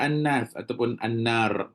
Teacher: pada Anas ataupun Annar contoh ada alif lam pun sebenarnya adalah wajibul gunnah juga. Jadi dia punya taraf dia ataupun tahap dengung dia sama aja. Mesti kena dengung juga.